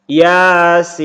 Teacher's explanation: Ya dibaca panjang 2 harokat, sin dibaca 6 harokat.